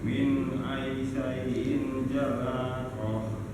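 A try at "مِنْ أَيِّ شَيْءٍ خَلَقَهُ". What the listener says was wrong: Ayyi syai'in kha ya Pak. Tinggal di ini Pak, di ianya ya.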